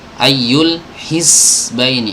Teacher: Huruf zai dia berdesis, suaranya berdesis, tapi nggak boleh mengalir udara ya, nggak boleh mengalir udaranya, nggak boleh bocor gitu ya.